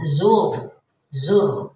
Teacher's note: Takatsur, hatta zur, hatta ya matobi sama dengan alha ya, hatta zur tumul zur tafhim ya, zur tafhim ya Bu ya, tebal karena sukun dan sebelumnya berbaris domah. Nah jadi ini ditebalkan zur gitu ya, jadi bukan zur tuh nggak begitu, ini tafhim karena sukun tapi sebelumnya berbaris domah, zainya berbaris domah.